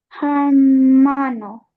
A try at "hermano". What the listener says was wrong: See, it the letter H, it's always silent. So it's not hermano, it's hermano.